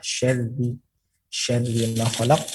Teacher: ditipiskan dengan cara melebarkan mulut dan lidah belakang itu ke bawah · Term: huruf ra